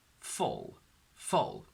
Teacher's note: focus on getting the tongue curling against the alveolar ridge for the L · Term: dark L